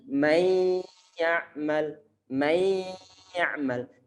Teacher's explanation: Di saat kita telah memasukkan suara nun dalam suara ya, maka jangan sampai lupa memberikan suara dengungan. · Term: idgham bi gunnah